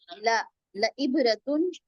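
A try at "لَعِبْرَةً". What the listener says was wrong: तुन भी नहीं है बेटा, तन है।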